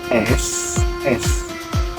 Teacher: pas kita ngucapin huruf S, itu udara ngalir terus, tapi ada gesekan di lidah dan langit-langit